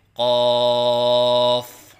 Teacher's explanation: الف کی ادائیگی منہ کے کھولنے سے ہوتی ہے، اور 3 الف کے برابر لمبا کر کے پڑھیں